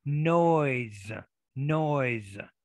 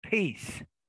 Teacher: in english you never know about other languages right so so because the vowel is voiced the s also becomes voiced